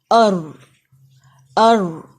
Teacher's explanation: تو آپ نے جو آپ کی ٹنگ ہے اس کو زبان کو اوپر اٹھائیں اور ٹیتھ کے ساتھ نہیں یہ لگے گی، یہ اوپر گم کے ساتھ لگے گی